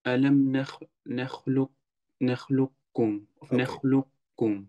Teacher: Je begint met een kaf en je eindigt met een kef. En die kaf hoor je eigenlijk niet. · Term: idghamun naqis